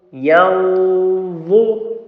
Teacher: this nun sukun after the letter dha is ikhfa, but the ghunna will be the full mouth, the tafkhim, because of the dha is the full mouth letter